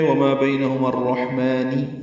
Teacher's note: رہے ہیں ادغام شمسی ہے، ہا ساکن پہ ہمس ہے، میم کو دو حرکات لمبا کرنا ہے